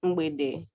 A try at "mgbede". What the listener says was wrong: really pronounce the G. You don't really pronounce the G.